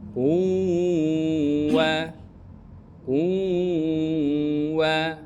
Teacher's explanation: idgham bila idgham Bun bighhunah atau maal Gun maal gunah artinya qun dibaca menjadi quwa dia lebur ke wau kemudian didengungkan